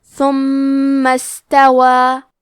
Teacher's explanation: میم پہ تشدید ہے تو ہم 2 حرف کے برابر میم کو پڑھیں گے۔ کلمت استوا میں شروعات میں حمزہ وصل ہے، ہمیں حمزہ کو ظاہر نہیں کرنا ہے۔ کلمت ثم کے بعد حرف سین کو پڑھیں گے، کیونکہ یہاں سین ساکن ہے تو ہمیں سین کو ہمزے سے پڑھنا ہے۔